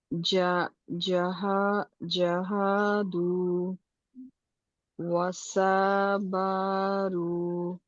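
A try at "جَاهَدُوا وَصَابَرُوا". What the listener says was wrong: এটা সা হবে না, হবে স। যাতে একটা আলিফ আছে, উনি আলিফের টান দেয় নাই।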